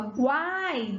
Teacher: das 3 vogais, a que sai mais forte é o A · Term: vogal central